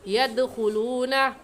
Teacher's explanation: يَدْخُلُونَ میں دال حروف قلقلہ میں سے ہے، قلقلہ کریں گے اور ایسے کہیں گے يَدْخُلُونَ۔